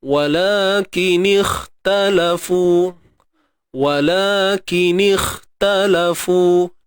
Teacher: Terangkatnya pangkal lidah bagi huruf kha. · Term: Isti'la